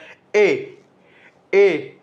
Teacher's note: कंठ से भी आवाज आ रही है और जीभ तालु को भी छू रही है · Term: कंठ तालव्य